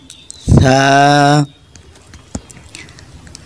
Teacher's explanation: ছা হরফটা একটু নরম হবে জিহ্বার আগা সামনের উপর দাঁতের আগার সঙ্গে লাগাইলেই হয়ে যাবে